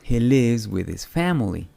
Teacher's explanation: La S al final de live se pronuncia Z también porque el sonido V de la B pequeña también es sonoro, V. Es decir que nuestras cuerdas vocales vibran también.